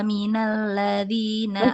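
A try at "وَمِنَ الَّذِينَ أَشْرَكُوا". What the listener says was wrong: Masukin lagi ke hidung.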